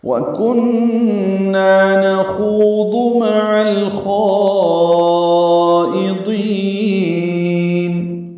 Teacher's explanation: واو ہونٹ کی نا تمام گلائی سے ادا کرنی ہے. کن نون مشدد پہ غنہ ہے اور نا الف مدہ ہے.